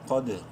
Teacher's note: قوف bold letters میں سے ہے، منہ بھر کے پڑھتے ہوئے دال سے ملاتے وقت قلقلہ کریں گے دال پہ